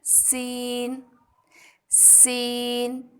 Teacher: زبان کی نوک کو اوپر نیچے کے 2 سامنے کے 2 یعنی کہ 4 دانتوں کے کناروں سے مضبوطی سے یہ آواز نکالیں سیٹی جیسی. سو باریک آواز میں ادا کریں گے سین سین.